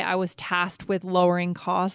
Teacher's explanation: We almost just eliminate the K to save time to make it easier.